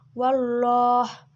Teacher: hukumnya itu tafkhim karena lafaz Allah didahului oleh huruf hijaiyah wau berharakat fathah cara membacanya itu tebal